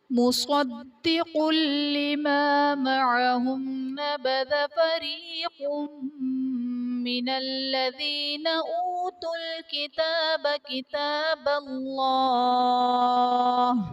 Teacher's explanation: مصدق لما میں صاد اور قاف حرف مستعلیہ ہیں پر پڑھے جائیں گے، دال حرف قلقلہ مشدد ہے تو یہاں پر قلقلہ خوب جماؤ کے ساتھ ادا کریں گے۔ مصدق لما میں قاف پر دو پیش کی تنوین، تنوین کے بعد حروف جرملون میں سے لام آ رہا ہے تو یہاں پر ادغام بلا غنہ کا قاعدہ ہوگا، یعنی تنوین میں ہم غنہ نہیں کریں گے۔